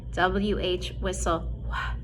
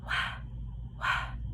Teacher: if you feel your throat when you do W-H, whistle, wh, you don't feel it vibrate.